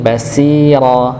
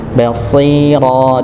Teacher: Sekali lagi ketika kita baca basira maka tidak dibaca dengan sin basira tapi basiro dengan huruf sh ya bukan huruf sin begitu nggih ya. Karena huruf sha ee dia tetap tebal dalam kondisi apapun nggih. Dia mau fathah, kasrah, dommah, sukun sekalipun tetap dia dibaca tebal ya.